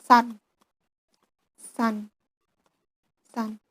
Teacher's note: S, s. Sound is fricative voiceless on alveolar coronal place